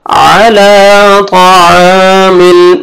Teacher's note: मीम जेर लाम जज़म मिल, तौआमिल, अला तौआमिल। यहाँ पे भी लाम को आपने 1 अलिफ के बराबर खींचना है, अलिफ मद्दा के कायम मकाम है, खड़ा जबर।